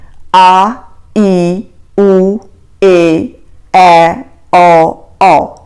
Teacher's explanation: ਜਿਹੜੇ ਦੀਰਘ ਸਵਰ ਹੁੰਦੇ ਨੇ ਉਹ ਲਘੂ ਸਵਰ ਦੇ ਨਾਲੋਂ ਦੁੱਗਣਾ ਸਮਾਂ ਲੈਂਦੇ ਨੇ, ਵਧੇਰੇ ਸਮਾਂ ਲੈਂਦੇ ਨੇ।